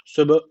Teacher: Devam edelim. Söb derken B harfi cezim almış. E o zaman burada kalkale tecviti var. birazcık vurgulayacağız.